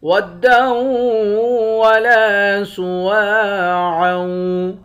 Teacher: لام کے بعد الف ہے، الف حروف مدہ ہے، ایک الف کے مقدار کھینچ کر پڑھیں گے۔